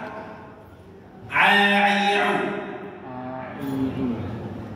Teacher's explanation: Huruf ain makhrajnya itu di tengah tenggorokan.